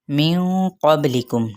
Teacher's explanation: با پہ قلقلہ کریں گے یعنی با کے لیٹر کو ہلائیں گے، میم پہ اظہار شفوی۔